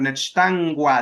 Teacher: acá la K sí suena a G porque está después de una N